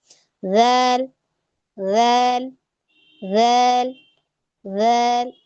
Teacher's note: जबान की नोक आपकी दांतों के किनारों पर लग रही है